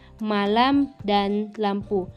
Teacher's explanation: huruf M yang bercirikan hidup, nasal, dan bilabial.